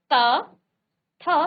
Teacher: आपकी जीभ ऊपर के दांतों से टच होके ये जो उच्चारण है इनका जो ध्वनि है वो निकल रही है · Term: दंत्य